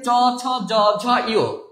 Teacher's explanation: এইবার দেখেন এই যে চ ছ জ ঝ ইয়, এই যে জিহ্বার অগ্রভাগ একটু প্রসারিত হয়ে দন্তমূলের একটু উপরে যে তালু আছে সেই তালুতে স্পর্শ করে কিন্তু চ ছ জ ঝ ইয় এই বর্ণগুলো বা ধ্বনিগুলো উচ্চারিত হয় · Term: তালব্য বর্ণ